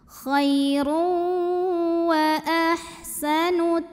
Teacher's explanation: Ada idgham bi gunnah karena ada tanwin dhammah bertemu huruf waw. Maka tanwinnya masuk ke waw, khairu, dan tahan dengungkan.